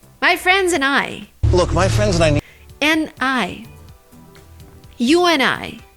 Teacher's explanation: Very often, American people say n instead of and.